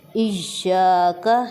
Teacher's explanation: ی پر شد ہے تو اس کا مطلب کیا ہوا کہ ہم یہاں پر زور دے کر بولیں گے